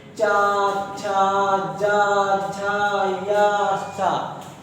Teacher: जिस वर्ण को बोलते समय तालु का इस्तेमाल हो जाए, ठीक, तालु का प्रयोग हो जाए, उसको हम बोलेंगे तालव्य वर्ण।